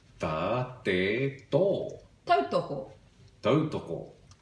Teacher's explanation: So if you're saying ta, te, and to, you don't have any of that sibilant sound that you have in English